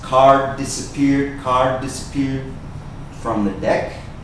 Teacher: we can put together the sounds of the 2 Ds.